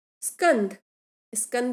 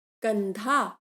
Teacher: स्कंध, स्कंध बोलने में हमें दिक्कत हो रही क्योंकि यहाँ संयुक्त व्यंजन है, तो वो स यानी कि आरंभिक जो व्यंजन था स, उसका लोप हो गया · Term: आदि व्यंजन का लोप